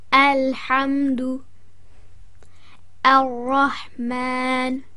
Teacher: the Hamzatul Wasl is read as if it has a fatha on it, making the sound of al or a joining with the letter with the shadda, which effectively is the al, the definite article the.